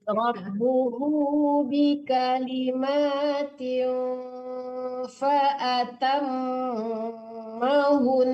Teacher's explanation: Nah itu yang akan dilamakan karena nun bertasdid itu dangung gitu, gunah gitu. Langsung ditasdidkan hunya ke nun, jangan dipanjangkan hunya.